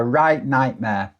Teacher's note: Have you noticed I've dropped the T on right and nightmare? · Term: glottal stop